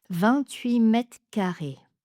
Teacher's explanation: j'ai mis le R entre parenthèses parce qu'en discours rapide, on peut le supprimer, ce qui facilite la prononciation.